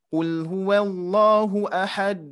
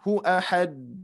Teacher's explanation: Cukup ditekan sedikit ya. Ada jeda, berbeda dengan huruf qalqalah yang tanpa ada tasydid.